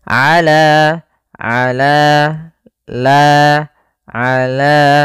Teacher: yaitu fathah bertemu Alif panjangnya dua harakat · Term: Mad thai'i